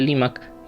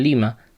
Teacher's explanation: una consonante oclusiva al final de las palabras, por lo que los hablantes españoles de esa época omitieron la pronunciación de la C final de Limac y se quedaron con la denominación Lima